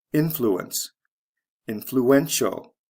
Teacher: influential spelling changed from c e to t i a l the syllable stress goes from the first to the third syllable